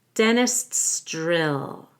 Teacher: you do need to have a held T at the end of dentist and before the apostrophe s